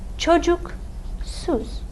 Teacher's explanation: The vowel in the final syllable is an U. Look at our chart. U is a back rounded vowel. That means we're going to choose which of our suffixes in our four-way vowel harmony, which of these harmonizes best with the U in çocuk.